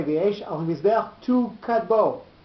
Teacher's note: you say v'yesh al mizbeach tu kadbo, with the accent on tu.